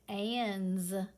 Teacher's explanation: is that letter vibrating it sure is so that means that this s is going to vibrate it's going to make the z sound